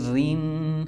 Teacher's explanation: زیر کی صورت میں را کو باریک پڑھتے ہیں